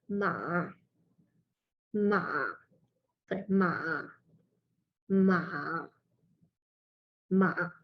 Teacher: I don't know if you can hear my voice, but it does dip. So I guess I like to kind of like do that gesture with my head, where my head goes like that, because it kind of helps me get it out a bit more. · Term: fourth tone